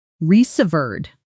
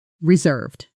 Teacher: Stress on the second syllable. The served part rhymes with curved. Practice with me.